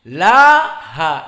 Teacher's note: lam masuk kepada huruf yang muraqqaqah. Huruf yang biasa, yang flat, yang datar. Laha. Dan alif, alif mengikuti yang sebelumnya.